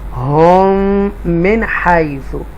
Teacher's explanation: इदगाम शफ़वी double मीम यहाँ पर आ रहा है, तो गुन्ना करेंगे